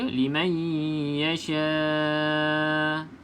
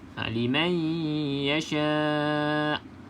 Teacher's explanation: Walaupun hamzah ni kita matikan, kena bunyikan huruf hamzah tersebut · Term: hamzah yang sukun